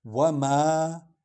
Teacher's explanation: میم شفوی حرف ہے، وا بھی شفوی حرف ہے، یعنی ہونٹوں سے نکلنے والا حرف، شفوی کہتے ہیں جو ہونٹوں سے نکلے۔